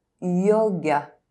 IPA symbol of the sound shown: j